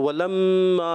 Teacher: ولما میم مشدد ایک الف کا غنہ کریں گے